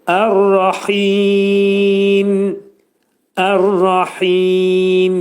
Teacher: Ayənin sonunda mimin altındakı kəsrə atılır və mimin üstündə bir sükun peyda olur və onu izhar etməliyik